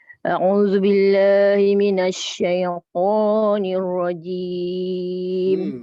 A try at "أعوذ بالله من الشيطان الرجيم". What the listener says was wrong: Dia tinggi sangat tu. A'udzu billahi La, na. Rendahkan sikit, rendahkan rahang. Tarik rahang buka.